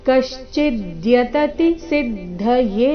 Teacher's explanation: ದ್ಯ ಸಂಯುಕ್ತಾಕ್ಷರ ಮುಂದೆ ತ ಮತ್ತೆ ತಿ ಎರಡು ಸಹ ರಸ್ವ ಕಶ್ಚಿದ್ಯತತಿ ಸಿದ್ದಯೇ ಕೊನೆಯ ಎ ಮಾತ್ರ ದೀರ್ಘ